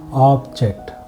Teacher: We stayed on ob, the first syllable, a little more. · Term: stress